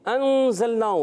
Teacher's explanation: نون ساکن کے بعد زا حرف اخفا میں سے، زا سیٹی والے حروف میں سے، سیٹی کے ساتھ ادا کریں گے